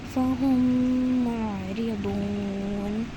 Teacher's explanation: میم ساکن کے فوراً بعد میم پیش کے ساتھ آ رہا ہے، جو میم کو ہم نے میم سے ملا دیا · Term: ادغام شفوی